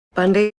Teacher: She holds her B a little bit. It's a little bit stronger than it maybe would be. She's in disbelief, so she pauses.